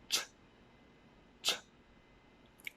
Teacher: this would be a voiceless sound, since you don't use your vocal cords in order to produce the sound. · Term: ch sound